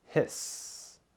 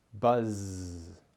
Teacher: the voiceless s sound or the voiced z sound